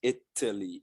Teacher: you never take that t as flap t or d